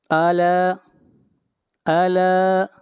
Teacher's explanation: لام کو کھینچ کر پڑھیں گے ایک الف کے برابر